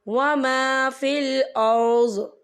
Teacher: وقف کی صورت میں ضاد ساکن ہو جائے گا۔